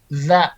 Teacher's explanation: Ujung lidah menyentuh dengan dinding gigi seri atas. Jadi kalau bahasa sederhananya digigit lidah teh. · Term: huruf za